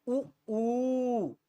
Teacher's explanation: और इन्हीं वृत्ताकार को वृत्त मुखी भी कहा जाता है अर्थात जिनके बोलने में मुख गोल हो जाए वृत्त की तरह हो जाए गोल हो जाए